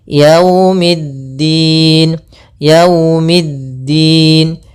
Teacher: hati-hati jangan terlalu dihentakkan karena di sini bacaan Lin maka kita harus menyempurnakan daripada linnya kelembutannya